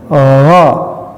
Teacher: Huruf gha ini adalah huruf al-halqu ya, itu adnal halqi, huruf tenggorokan ada di atas, ya. Itu ingat bahwa si huruf al-halqu ini huruf 6 yang dibagi 3, ada aqsal halqi, di bawah ada wastal halqi di tengah, dan adnal halqi di atas. · maka pengucapan huruf gha ini harus terangkat, ya, si lidahnya ke atas langit-langit, ya, sama dengan huruf kha, ya, gha, ya, ini.